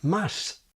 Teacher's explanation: The Spanish sound is visibly intermediate between English 's' and 'sh'.